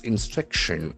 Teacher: There are four syllables, instruction, and the accent falls on the second syllable.